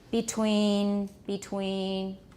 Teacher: this is just a very unstressed mid-tone flat word